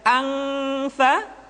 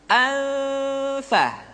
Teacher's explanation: nun mati tanwin ketika digunakan posisi makhraj sudah berada pada huruf fa. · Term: ikhfa